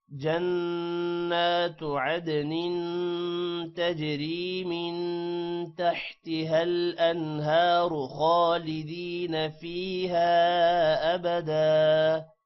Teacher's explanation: من پر غنہ ہوگا، انہارو را موٹا ہوگا، خالدین خا بھی موٹا ہوگا، جبکہ فیہا الف پر مد ہے